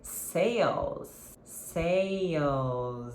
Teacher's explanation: É o Z sound, ok? No final, esse S do plural de sale, sales, é um sonzinho de Z